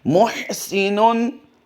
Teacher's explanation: हा की अदायगी थोड़ा सीटी सी हलक के दरमियान से आएगी